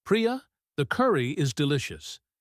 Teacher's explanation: He emphasizes the word delicious.